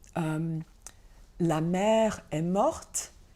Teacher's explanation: the adjective morte has a t sound at the end, which is the feminine agreement